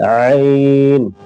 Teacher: عین، یہ بیچ والے حلق سے